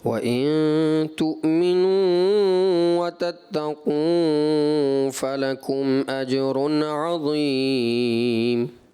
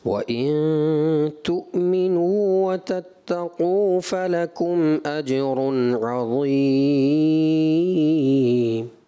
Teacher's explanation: ناک میں آواز چلی گئی، پھر تھوڑا دراز بھی بڑھا دیا آپ نے، کھینچ دیا تھوڑا زیادہ. وَتَتَّقُوا بھی تھوڑا زیادہ کر دیا.